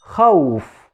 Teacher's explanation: The waw in this word in khawf is done from the lips, not from the empty space in the throat and mouth.